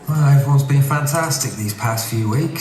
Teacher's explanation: past is actually the bath vowel, which is becoming like the trap vowel, the northern version.